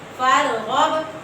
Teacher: با کے اوپر جزم ہے، حروف کلکلا کے 5 حروف میں سے با ہے تو اس کو کھلا کے پڑھیں گے، کلکلا کریں گے اس کے اوپر.